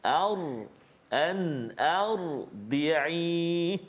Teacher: Jadi kita kena tebalkan bacaan bunyi pada huruf ra sukun ataupun ra yang berbaris mati yang kita belajar sebelum ini. Sebelum huruf ra itu baris atas, maka dia bunyi tebal